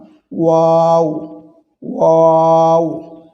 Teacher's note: ওয়াও হরফটি দুই ঠোঁট হইতে উচ্চারিত হয়। ওয়াও হরফটি দুই ঠোঁট একটু গোল করে এটি উচ্চারণ করতে হয়।